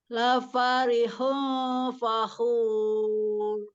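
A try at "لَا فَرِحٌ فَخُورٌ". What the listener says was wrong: Ini bagus tapi kurang panjang dengungnya. Coba lagi. Pakai dhammah. Jadi harus benar-benar monyong mulutnya.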